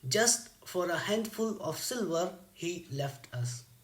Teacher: we find that the pattern is stressed, unstressed, unstressed, and this is an example of dactyl.